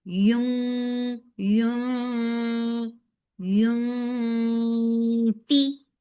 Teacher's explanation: Yun for the circular ellipse and the ikhfa is coming up. So you are hiding the sound of noon. You're going towards the makhraj of fa and you're keeping the sound in your nose for noon.